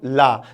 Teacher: बोल के देखो ला। देखो आपकी जीवा मूर्धा के पास जा रही है और जीभ के दोनों किनारे से हवा निकल रही है · जब हम ला वर्ण का उच्चारण करते हैं तो हमारी जीवा मूर्धा के पास चली जाती है और जीभ के दोनों किनारों से लल्ला हवा निकलती है, इसीलिए इनको पार्श्विक वर्ण कहा जाता है।